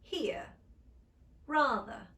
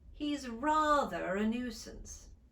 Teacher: pronounce the r between two vowel sounds as in harry and they will pronounce the r if it comes at the end of a word and the following word begins with a vowel sound